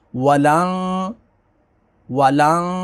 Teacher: نون ساکن کے بعد تا ہے تو یہاں پر اخفا ہوگا، غنہ کریں گے